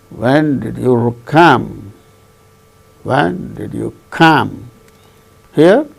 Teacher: When did you come? Here, come is the word that gains the falling tone